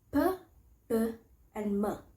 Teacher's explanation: It's a sound made by pressing both of your lips together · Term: bilabial